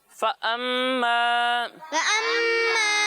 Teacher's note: मीम में गुन्ना करके पढ़ना है